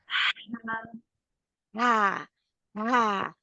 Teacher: हा फील होती है अपना हाथ आगे रखे मुंह के तो आपको फील होगी हवा बाहर आ रही होगी हा के लिए